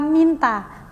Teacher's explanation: vokal I dalam kata minta merupakan vokal tinggi